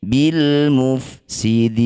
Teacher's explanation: Bunyi lam sukun baca dengan jelas. Jangan tawallud ya atau diseret-seret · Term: izhar qamariyah